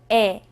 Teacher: 입을 작게 벌리고 옆으로 당겨서 내는 소리입니다